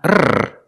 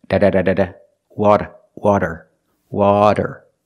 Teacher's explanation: It's not a rolled R. It's a flat T or a fast D.